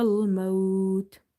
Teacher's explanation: waw is sakina and before this you can see there is a fatha which makes this waw lean. So there will be madde lean arid, because its second last letter is lean.